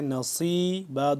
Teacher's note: اب یہ سین اور صاد جدا ہوتے ہیں, صاد ذرا پر کر کے پڑھا جاتا ہے جبکہ سین کو باریک سے پڑھتے ہیں